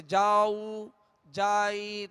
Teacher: تو جیم جو زبر ہے وہ کھینچ جاتا ہے، دراز ہو جاتا ہے